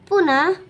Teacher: विसर्ग बोलते समय ह की आवाज आती है।